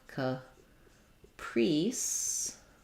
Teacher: even though it looks like the word price with the I diphthong it is an e in this word